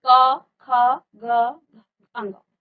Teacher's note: इन वर्णों का उच्चारण कहां से हो रहा है हमारे कंठ से हो रहा है